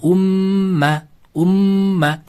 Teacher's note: sukunlik mim harfidan so'ng yana bitta mim harf kelib qolsa ikkita mimni birlashtirib g'unna bilan o'qiymiz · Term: Idg'om shaffabiya